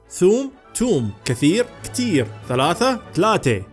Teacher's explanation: مناطق كثيرة تستبدل حرف الثاء بحرف التاء